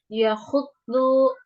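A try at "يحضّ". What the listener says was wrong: Masih pakai mulut, Mbak. Yahud, yahud.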